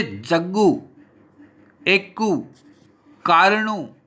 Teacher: अंत में ह्रस्व उ बहुलता से प्रयुक्त होता है